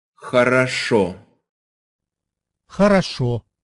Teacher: in Russian, only one O per word can be pronounced as an O. The rest sound like a.